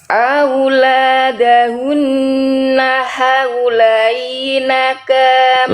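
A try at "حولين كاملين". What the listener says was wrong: Lainnya jangan dipanjangkan. Jangan gini Bunda. Auladahunna haulaini. Langsung haulaini kamilaini. Tadi Bunda lainnya terlalu delay. Ya, haulai cukup dibaca lembut haulaini. Haulaini kamilaini gitu ya.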